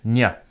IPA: ɲ